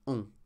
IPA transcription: ɔ̃